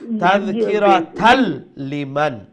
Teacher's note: তো এই তানবিন গিয়ে লামের সাথে জয়েন হয়ে যাব